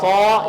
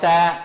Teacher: صاد موٹا ہے، سین باریک ہے. یہ ہے صا، یہ ہے سا.